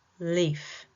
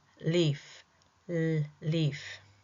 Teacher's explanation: Tongue can drop down to one side. Air escapes around the side of the tongue. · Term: lateral